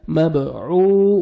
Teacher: با حروف قلقلہ میں سے ہے، ڈبل ساؤنڈ آئے گا ، مبعو، واو مدہ ہے، واو سکون سے پہلے پیش ہے،